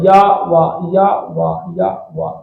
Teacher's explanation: या वा या वा या वा, बहुत हल्का, या वा या वा या वा, बहुत हल्का सा, बहुत हल्का सा ही मान लो होठ का स्पर्श हो जाता है। या में थोड़ा सा तालु, वा में थोड़ा सा होठ। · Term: अर्ध स्वर